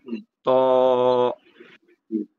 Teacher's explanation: যেমন আপনি যদি ত উচ্চারণ করেন, দেখেন জিহ্বার আগা সামনের উপর 2 দাঁতের গোড়াতে লাগে, দাঁতের গোড়াতে লাগবে।